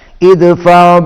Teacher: دال پر قلقلہ ہوگا